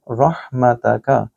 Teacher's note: रह देखिए हा के साथ मिल रहा है, आपने इसको भी गले के दरमियानी हिस्से से अदा करना है